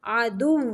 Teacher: دال کو واؤ کے ساتھ تھوڑی دیر تک ملانا ہے تاکہ واؤ کی ادائیگی ہو، واؤ مشدد ہے